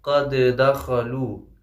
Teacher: دال پہ جو ہے ساکن ہے اس لیے ہم قلقلہ بھی کریں گے یہاں پہ تو مشکل ہو جائے گا، اس لیے ہم ادغام جو ہے کر دیں گے، یعنی گویا یہ کہ ایک دال جو ساکن والا تھا وہ حذف ہو جائے گا اور دوسرا دال پڑھا جائے گا۔